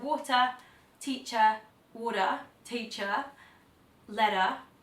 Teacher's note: at the end of words that end in ER, they'll just drop it and leave it open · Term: non-rhotic